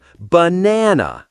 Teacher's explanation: We don't say banana or banana. The correct stress is on the second syllable. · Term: stressed syllable